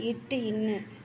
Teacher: நாவின் இடைப்பகுதி நடு அன்னத்தில் இடைப்பட்ட பகுதியில் பொருந்துவதால் பிறப்புவது இச்சு இஞ்சு. நாவின் நுனி அன்னத்தின் நுனியில் பொருத்துவதால் பிறப்பது